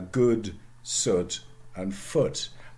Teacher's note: they don't have the central vowel